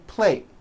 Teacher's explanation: I eat on a plate, and you don't hear the T sound.